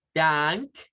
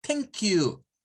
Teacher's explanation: cuando es el TH, la lengua se asoma un momentito ahí por los dientes.